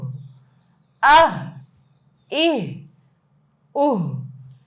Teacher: میں گلے کے اس حصے سے ادا کر رہی ہوں جو سینے کی طرف ہے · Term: ہا کا مخرج